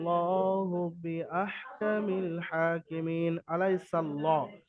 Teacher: ইয়ালিনকে নরম আওয়াজে তাড়াতাড়ি পড়তে হবে